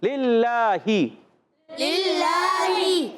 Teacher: اور للہ یاد رکھیں، للہ میں پہلے نام کے نیچے زیر، پھر دوسرا لام جو آ رہا ہے اس پر کھڑا زبر ہے، پھر ہا کے نیچے زیر. یعنی جہاں زیر ہے وہاں نہیں کھینچنا، مگر کھڑا زبر اس کو کھینچیں.